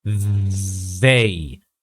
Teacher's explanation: Just the tip of the tongue is more than enough to produce this sound correctly. So since this is a voice TH sound, we should be gathering, or the sound should be coming from our vocal cords.